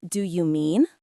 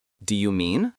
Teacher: Try it with a rising intonation, like a question.